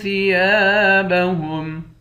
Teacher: یا کے بعد الف ہے، اس الف کو ایک الف کی مقدار کھینچ کر پڑھیں گے